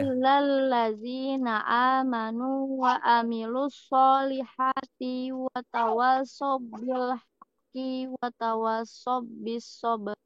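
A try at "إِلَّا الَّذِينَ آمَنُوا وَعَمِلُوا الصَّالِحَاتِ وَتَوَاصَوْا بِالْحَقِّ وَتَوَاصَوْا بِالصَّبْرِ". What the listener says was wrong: Tapi ada beberapa panjang pendeknya yang masih kelewat. Pertama tadi di hamzah dan ain ini tertukar. Ya, tertukar tadi. Ketika ada ain tetap dibaca ain, jangan menjadi hamzah juga. Wa amilus tidak. Kemudian solihati ti-nya pendek saja, tidak dibaca panjang.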